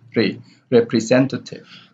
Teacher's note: So re here has the secondary stress, re, representative, and sen here has the primary stress.